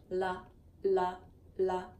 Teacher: the Light L, which has a forward motion with the tongue